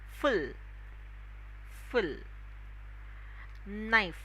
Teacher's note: the letter F again upper teeth lower lip